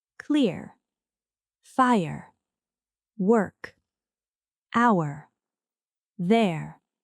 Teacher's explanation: The vowel and R are pronounced together as one unit. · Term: R-colored sounds